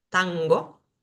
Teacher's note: tenemos el sonido nasal gutural como está na de tango